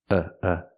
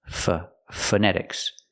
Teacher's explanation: the first vowel is the short uh like cup and up it's relaxed